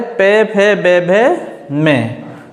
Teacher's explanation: जिन्हें ओष्ठ व्यंजन कहते हैं, जो होठों के मिलाकर बोला जाता है, होठों की सहायता से बोले जाते हैं।